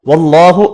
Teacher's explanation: اللہ کا نام زبر کی وجہ سے پر پڑھنا ہے